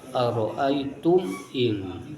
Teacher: Dari ayat ara'aitum yang diakhiri dengan mim mati bertemu hamzah, maka dibaca jelas izhar syafawi. Dua bibir ditutup rapat, kemudian segera dibuka.